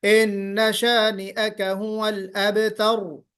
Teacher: तर थोड़ी सी तिकरार हो, रिपीटेशन हो और तफखीम हो, रा मोटा भी पढ़ा जाए